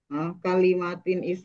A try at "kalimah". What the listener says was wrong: kalimah, jangan kalimat, kalimah.